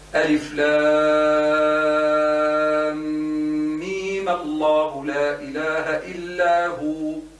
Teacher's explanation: جيب الغنة حركتان وبعد نعمل حركتين أخرين تاع المد ونواصل